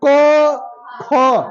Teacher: जीभ की जड़ से हमारे पास क ख इसको हम बोलेंगे तो अंदर से बोलेंगे · इसको हम बोलेंगे तो अंदर से बोलेंगे क ख, जिह्वा के मूल से क ख, ये जिह्वा मूली होता है, ठीक है। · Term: जिवा के मूल से